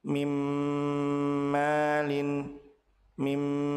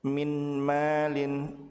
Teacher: maka nun dilebur ke huruf mim dengan cara ditahan dua harakat disertai dengan ghunah. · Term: gunnah